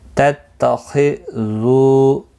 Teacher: خا مستعلیہ ہے، پر پڑھنا ہے.